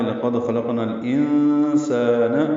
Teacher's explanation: نون کو الانسان کے لام سے ملانا ہے، اظہار قمری ہوگا، نون ساکن کے بعد سین آنے کی وجہ سے اخفا ہے ، لقد خلقنا الانسان، سالک مدہ ہے، 2 حرکات لمبا ہے،